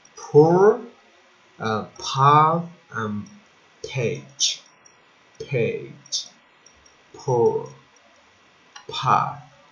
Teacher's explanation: the position of your mouth is the same like B, but is voiceless. It's not there is no vibration, and that is the same position.